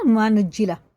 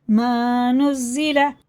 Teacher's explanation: زا سخت ہوتا ہے، جیم کے مخرج سے ہٹا کے